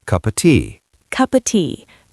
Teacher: That of becomes a schwa